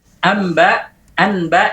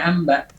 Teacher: kenapa nun sukun bertemu ba menjadi mim? Karena pengucapan ba sukun dengan lama diamnya sama seperti mim ya.